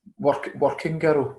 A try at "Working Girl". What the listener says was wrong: like you're saying walking girl.